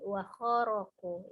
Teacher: Wa pendek, kho juga pendek, ro-nya pendek, di sini ketemu dengan panjang ku. Maka tidak boleh terjeda sebelum ketemu ku.